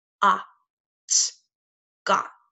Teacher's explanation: the O is saying ah that's a short vowel sound and the T is a consonant closing our vowel in this